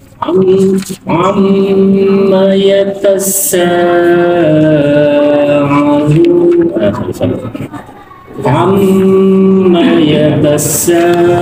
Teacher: Ya, sa ada sifat sakhir. Ya, kuat desisnya. Hasyatus saut namanya, tajam suaranya.